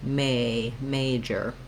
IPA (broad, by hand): ˈmeɪdʒər